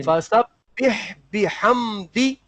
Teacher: ہاں بہ نہیں ہوگا, بیح ہوگا. با کی جو حرکت ہے وہ معروف پڑھیں